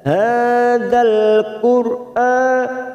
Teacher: ra sukun yang didahului dhammah kita baca tafkhim atau tebal